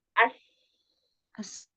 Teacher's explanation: ujung lidah hampir bertemu dengan gigi seri bagian bawah bagian dalamnya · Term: huruf sin